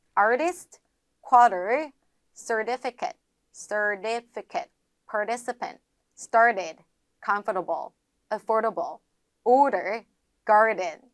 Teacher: 미국식 발음으로 갔을 때에는 주로 앞에 R이 들어가고 뒤에 T가 들어가게 되면 소리를 리을로 바꿔주자